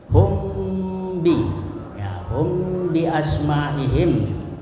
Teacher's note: Ya, itu apabila ada mim sukun bertemu dengan ba, hum bi. Ya, cara membacanya harus disuarakan samar-samar di bibir dan didengungkan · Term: ikhfa syafawi